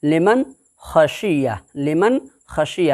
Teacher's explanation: ناک کے بانسا کے اندر میں، خیشوم کے اندر میں آواز کو نہیں چھپایا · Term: اظہار حلقی